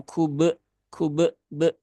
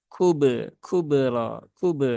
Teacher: jangan sampai ada tambahan hamzah ya di belakang atau di setelah huruf ba yang sukun ya. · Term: sifat kolkolah